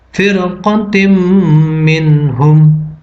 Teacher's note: Cara membacanya adalah dibaca dengung. Hukumnya adalah idgham bi gunnah, karena huruf ta berharokat kasroh, tanwin bertemu dengan mim.